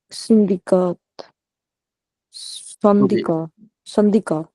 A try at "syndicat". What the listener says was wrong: Okay, we don't pronounce T. You got it right.